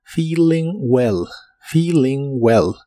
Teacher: La doble E del verbo feeling se pronuncia como una I larga o doble, y la letra I se pronuncia como una I corta.